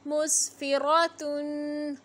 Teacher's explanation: रा पे ज़बर है, रा को मोटा पढ़ेंगे